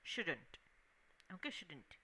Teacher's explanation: the T part is not very strongly pronounced